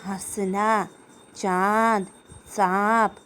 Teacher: इसका उच्चारण करते समय हवा मुख और नाक दोनों से निकलती है। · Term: चंद्र बिंदु